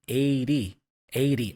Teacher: the T there for 80 is a flap sound